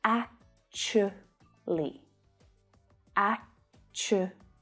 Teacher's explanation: But when spoken by a native English speaker, when they say it naturally, the word reduces down to 3 syllables.